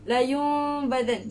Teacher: bila kita nak masuk huruf ba tu dia macam tertutup sikit tapi dia tak tutup sangat. Dia kalau Syekh cakap ibarat menggigit sehelai kertas macam tu. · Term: iqlab